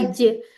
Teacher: सख्त तालू के साथ जबान बीच वाला जुबान का हिस्सा लगे